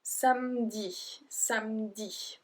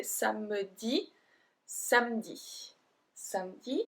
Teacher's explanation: we don't pronounce the E, we kind of skip the E.